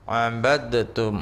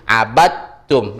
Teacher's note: cara bacanya nggak pakai qalqalah lagi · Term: idgham yang berhampiran